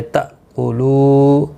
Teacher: حمزہ ساکن کو جھٹکی کے ساتھ ادا کیا جائے گا